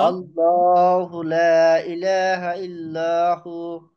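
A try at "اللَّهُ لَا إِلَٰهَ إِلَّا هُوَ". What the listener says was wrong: ইল্লাহু, ইল্লাহ মোটা হবে না কিন্তু, ইল্লা সব চিকন। আল্লাহ এইটাই মোটা, লা চিকন, ইলাহা চিকন, ইল্লা এটাও চিকন। পরের তিনটা লাম কিন্তু কি হয়ে গেল, চিকন। হ্যাঁ, শুধুমাত্র আল্লাহ এটাই মোটা হবে, আর বাকি সব চিকন।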